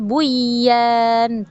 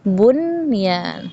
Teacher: Ini ada nun sukun bertemu huruf ya. Seharusnya terjadi hukum idgham, tapi karena dia dalam satu kata, jadilah dia izhar mutlak. Tidak kita baca buyan, tidak kita baca buyan, tidak, tapi kita izhar mutlakkan bunyan.